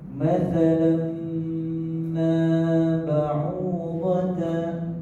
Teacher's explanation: Di sini tanwin bertemu dengan huruf mim, huruf idgham mim. Maka di sini kita kena baca secara dengung.